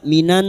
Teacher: Maka nun sukun kita dengungkan selama tiga harakat. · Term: idgham